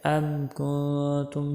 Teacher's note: ام کنتم میم پر دیکھ دھیان کرنا ہے کہ قلقلہ نہ ہو، اکثر لوگ اس کو ایسے پڑھ دیتے ہیں۔